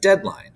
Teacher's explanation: troche which is stressed followed by unstressed deadline right it's not deadline it's deadline um unstressed unstressed stressed